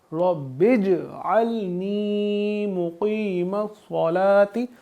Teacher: جیم پہ جزم ہے، یہاں پہ قلقلہ لگے گا، یعنی کہ ہم اپنی آواز کو ایسے پڑھیں گے کہ ہمیں اپنی آواز دوبارہ سنائی دے